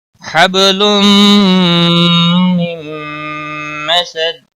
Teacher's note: نون ساکن کے بعد پھر یرملون کا میم آیا ہے، اس لیے نون یہاں پر حذف ہو جائے گا اور میم پر گنہ ہوگا